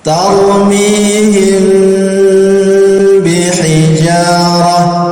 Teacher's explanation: Kita baca agak lama, dengungannya yang agak lama. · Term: ikhfa